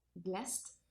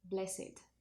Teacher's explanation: it would be pronounced with the final t if it's a verb, blessed, but if it's an adjective, it would be pronounced with id